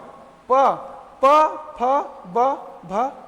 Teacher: हमारा जो होठ है वो एक दूसरे को छू रहे हैं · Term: ओष्ठय